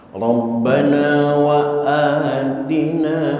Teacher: a-nya mad badal, panjangnya hanya 2 harokat